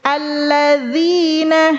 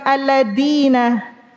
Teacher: Kalau zal, ujung lidah bertemu ujung gigi seri atas